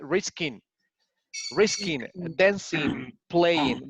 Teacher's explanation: We don't pronounce the G